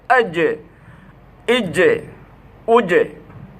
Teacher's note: তো জিম কলকলা হরফ যখন সাকিন হবে, আইজে ইজে উজে, ওই মাখরাজে বা জিব্বার মাঝখানের উপর তালুতে লাগাইয়া ধাক্কা লাগবে